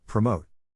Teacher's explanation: size of the syllable indicates where the accent or stress is in this case the accent is in the second syllable